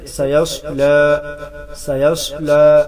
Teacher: صاد حروف مستعلیہ ہے، موٹا کر کے پڑھیں گے، خیال رہے لام ساتھ موٹر نہ ہو جائے، جیسے سیصلا، سیصلا لام کو موٹا ہونے سے بچائیے.